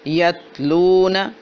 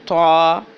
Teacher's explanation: تا کی آواز باریک ہے، سیدھی ہے اور بغیر جھٹکے والی ہے